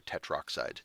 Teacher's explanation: they will take tetra oh sorry they will take tetra oxide they will blip out the a and turn it into tetroxide it's one less it's kind of one less syllable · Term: eliding a vowel